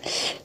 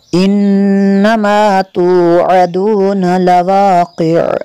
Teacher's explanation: عین کو ساکن کر دیں گے، تو تھوڑی سی آواز عین کی باقی رہے گی